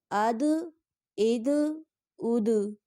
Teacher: دال بھی قلقلہ حروف ہے، اس کو بھی پڑھتے ہوئے آواز واپس کی طرف لوٹے گی